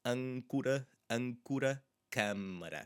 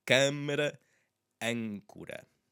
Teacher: So these, again, happen to have N's and M's after them, and a lot of them do, I will admit. A lot of these words that have this A with the circumflex in that positioning tend to have M's and N's related to them, so they are a bit more nasally than you would anticipate at first glance.